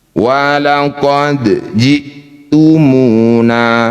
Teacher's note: dal sukun disebut qalqalah sughra, pantulkan kecil saja